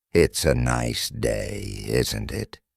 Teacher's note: The tone going up at the end tells the listener that you're asking a question.